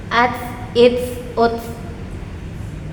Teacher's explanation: menggunakan hams seperti mengeluarkan sedikit udara pada ujung kalimatnya